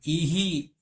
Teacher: ઈનું ઉચ્ચારણ સ્થાન ક્યાં છે તો કે ઈચયસાનામ તાલુ તાલવ્ય છે તો વિસર્ગ ક્યાં જતો રહ્યો તાલુમાં જતો રહ્યો સ્થાન બદલાઈ ગયું